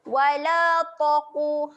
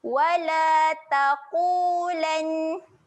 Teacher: Ta adalah huruf yang nipis. Jangan bunyikan dengan tebal.